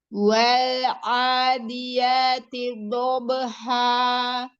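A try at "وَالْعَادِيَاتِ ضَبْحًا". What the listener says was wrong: Ya, wawunya jangan ambil ancang-ancang. Wa, wal'a, jangan uwa, nggak ada. Sempurnakan mat tabi'inya, 2 harokat. Jangan terburu-buru lam sukunnya. Wal adiyati dhabha.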